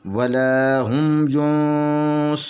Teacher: قرآن پاک جو ہے وہ 4 حرکت پہ پڑھ رہے ہیں، تو یہاں پہ ہم اس ینصرون کو جو ہے نا 4 حرکت کے برابر کھینچ کر پڑھیں گے